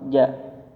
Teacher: Ketika mengucapkan huruf jim, tidak ada nafas keluar